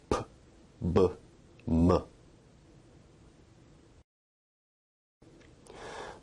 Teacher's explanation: Bilabial sounds are produced with both lips, like p, b, m.